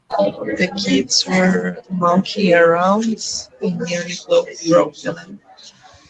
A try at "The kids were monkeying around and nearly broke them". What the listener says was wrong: Good. I couldn't hear if you said monkey or monkeying, but it's monkeying.